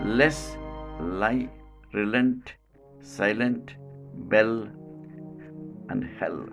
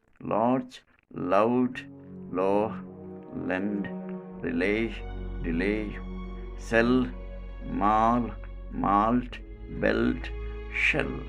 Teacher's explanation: the airstream escapes at the sides of the tongue quality voiced this is called alveolar voiced lateral